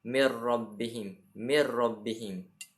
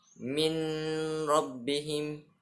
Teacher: Maka nun mati berhadapan dengan ra, hukum bacaan yang timbul iaitu idgham bila gunnah. Cara membacanya adalah dengan memasukkan suara nun mati pada ra, tidak mengeluarkan bunyi dengung seperti saat membaca idgham bi gunnah.